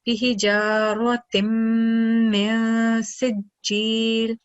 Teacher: Right after that, we have the Nun Sakin followed by letter Sin, which is a Ikhfa letter. So we're going to produce the Gunna sound, nasal sound, and prolong it for 2 seconds